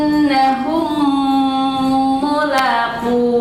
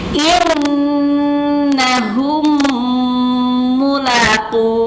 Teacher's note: ketika mim sukun menghadapi atau berhadapan dengan mim yang berharokat, ya, maka ini harus dibaca idgham · Dimasukkan bunyi mim ke mim berikutnya, tapi harus disertai dengan gunnah. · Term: idgham shaghir